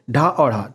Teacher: इनके उच्चारण में जीभ ऊपर उठकर झटके के साथ में नीचे आती है। इसलिए हम इन्हें उत्क्षिप्त कहते हैं। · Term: उत्क्षिप्त व्यंजन